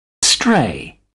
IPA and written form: streɪ (stray)